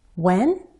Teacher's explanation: did you say he's coming when did you say he's coming if I use just the single word one syllable I glide